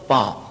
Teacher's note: तो उच्चारण स्थान ओष्ठ से और स्पृष्ट प्रयत्न, ये स्पृष्ट प्रयत्न क्या है कि दोनों ओष्ठों को मिलाकर बोलना